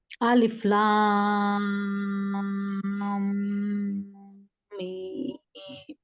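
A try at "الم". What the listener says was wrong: लाम को आप बहुत ज्यादा खींच रहे हो, 6 से भी ज्यादा, इतना नहीं खींचना। 6 फिंगर्स निकालिए, इसलिए मैंने आप लोगों को फिंगर्स का बताया।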